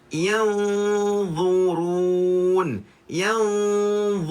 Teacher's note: Cuma kena ingat dha ni huruf yang bersifat ista'la, huruf yang tebal. Maka dekat sini kita kena tebalkan bacaan dia, angkatkan pangkal lidah kita